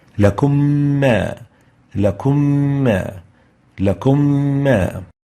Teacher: we merge them, producing a shadda on the second Meem and adding the two ghunnahs together